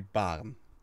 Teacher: the most standard way of pronouncing this would be baren, which is a very, very, very, very slight rolling R.